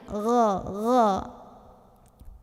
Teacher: Jadi gha ini dari tenggorokan paling luar.